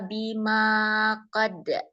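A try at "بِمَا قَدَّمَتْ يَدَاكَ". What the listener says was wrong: jangan lepas jangan lepas nanti keluar kalqolahnya enggak boleh lepas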